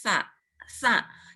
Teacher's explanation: pengucapannya sa itu ujung lidah ada di antara 2 gigi